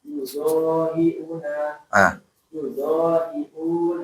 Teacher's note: Tapi di sini mad badal sama kayak mad tabi'i, dua harokat ya.